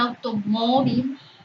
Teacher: automóvil lleva acento o una pronunciación más intensa en la penúltima sílaba